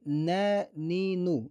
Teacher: Нун әріпінің махражы тілдің ұшы мен алдыңғы екі жоғарғы тістің ішкі жағынан шығады. Нун жіңішке әріптердің қатарына жатады. Оны жуан қылып жүрмейміз.